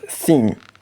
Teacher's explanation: For example, in the dental frictive, the sound th in the word thin, first of all, it fits that the airflow through a narrow passage between your tip of the tongue and your teeth to let the air escape.